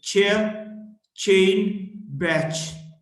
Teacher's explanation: voiceless post alveolar affricate